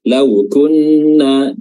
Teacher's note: Waqalu tadi sudah ya di awal lau ya huruf waw sukun yang dimana sebelumnya ada fathah. Nah di sini wawnya memiliki sifat lin.